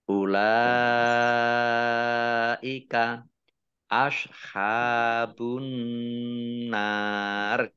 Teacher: Nun tasdid dibaca gunnah atau mendengung ditahan 2 harokat.